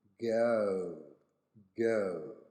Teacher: The last example is pronounced as go, go in American, but as go, go in British. Now in Australia we are going to insert an O sound in the middle of the diphthong there.